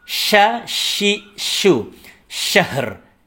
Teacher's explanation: Sya, tempat keluarnya di tengah lidah. Tempelkan ke langit-langit. Ya, yang tengah lidah kita.